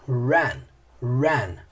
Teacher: As palavras que começam com R tem aquele som do R caipira, sabe? Lá pra dentro.